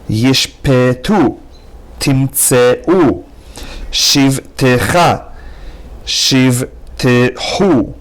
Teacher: And in the next exercise, each of these words, the first shva is silent, and the second shva is pronounced with a short slurred sound e